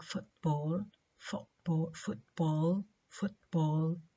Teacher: the puff of air is not released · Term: not released audibly